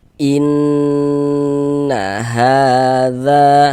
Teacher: suaranya itu kita tahan, kita panjangkan sebentar kira-kira sepanjang dua harakat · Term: gunnah musyaddadah